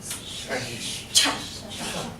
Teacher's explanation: So my teeth are stopping the air from coming out because when I say cha, it is on top of each other. I blow air when I say cha and let go. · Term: the CH sound